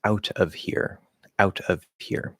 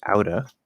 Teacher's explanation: we're dropping the v on of which we very commonly do